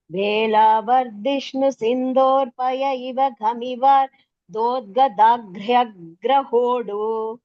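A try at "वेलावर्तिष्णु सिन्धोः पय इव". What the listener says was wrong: Beautiful.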